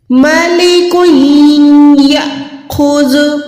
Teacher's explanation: کاف دو پیش کو ہم نے یا کے ساتھ ملا کے گننا کرنا ہے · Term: ادغام کا قاعدہ